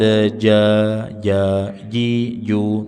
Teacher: tidak ada angin pada huruf jim